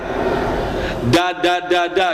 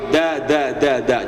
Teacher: Kalau kita kan huruf dal itu disamakan dengan huruf D ya, Pak, ya. Jadi, huruf dal itu sama makhrajnya sama dengan huruf ta. Nempelnya ke gigi, jangan ke gusi.